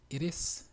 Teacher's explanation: la T del pronombre it en la afirmación suena prácticamente como una R sencilla que pronunciamos en español